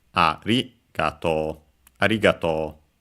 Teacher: the accent of arigato on its own would be on the ri